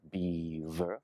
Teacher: This is a very tricky one because you have the B and V with beaver, beaver, B, lips touch, V is your top teeth and your bottom lip